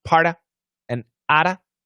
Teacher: Part of with a flap T, out of with a flap T.